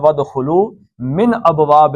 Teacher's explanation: نون ساکن کے بعد حمزہ آ گیا ہے تو نون کا اظہار ہوگا ، من نہیں پڑھا جائے گا بلکہ من